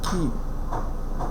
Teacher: K, which is voiceless, lingual velar, stop